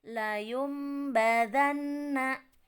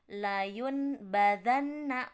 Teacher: mengganti bacaan nun sukun atau tanwin dengan bacaan m yang disamarkan dengan mim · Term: iklab